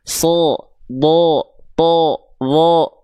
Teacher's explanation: Huruf tebal itu dia akan terdengar seperti condong seolah vokal O.